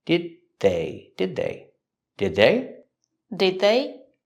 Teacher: Link the sounds. The D at the end of did is a stop D. Link it to the next word.